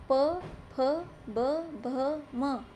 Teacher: ओष्ठय वर्ण होते हैं जिनको बोलते समय हमारे होंठ आपस में मिलते हैं।